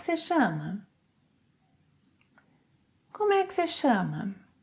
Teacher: In spoken Portuguese, você is often shortened to se